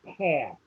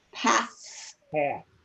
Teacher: if the TH occurs at the end of a word, it doesn't sound like it's voiced